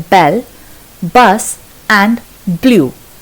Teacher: The two lips come together completely and then they release sound suddenly. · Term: bus sound